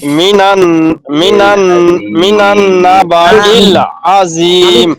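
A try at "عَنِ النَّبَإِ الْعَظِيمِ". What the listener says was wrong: মিনান না তো, এটা মিম না, এটা আইন। হ্যাঁ হ্যাঁ সেটাই।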